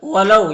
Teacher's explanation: وَلَوْ یہاں پر واو ساکن سے پہلے لام کے اوپر زبر ہے تو واو لین ہوگا، واو لین کو نرم آواز کے ساتھ جلد پڑھتے ہیں